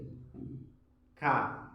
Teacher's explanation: Tapi makhraj hurufnya berbeda dia. Kalau qaf itu dipangkal, kalau kaf itu agak naik dikit. Itu tergolong lisan, al-lisan namanya. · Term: huruf kaf